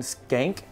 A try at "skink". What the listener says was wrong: No, skink. Don't call him a skank. S-K-I-N-K.